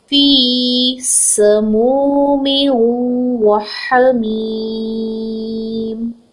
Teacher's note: سین whistling letter ہے، اس میں وسل کو پرومیننٹ کریں گے. ایک حرکت ہے، لمبا نہیں کریں گے.